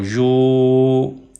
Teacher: مدہ یا as long vowel پڑھا جاتا ہے۔ تو اس لیے اب ہم یا کو لمبا کریں گے، واو مدہ کی وجہ سے ، واو یا کو ہیلپ کر رہی ہے لمبا ہونے میں۔